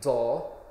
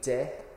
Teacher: a broad D would be like do, but a slender D would be like de